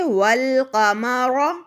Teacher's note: حمزۃ الوصل کو یہاں پر حذف کرنا ہوگا، جیسا کہ میں نے آپ کو پہلے سمجھایا کہ اگر ہم نے القمر کو پڑھا تو ہم نے حمزۃ الوصل کو پڑھا، اور اگر ہم اس کو پچھلے حرف سے ملائیں تو حمزۃ الوصل کو یہاں پر بالکل حذف کر کے ہم واو کو ڈائریکٹ لام سے ملا دیں گے، جب کا حمزۃ الوصل درمیان میں حذف ہو جائے گا یعنی گر جائے گا۔